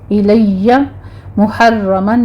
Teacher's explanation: الیہ محرمن میں را پر تشدید ہے را مفخم پڑھی جائے گی.